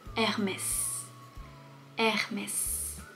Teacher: On ne prononce pas le H, Hermès. · on a le droit de prononcer le s pour une fois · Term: le son R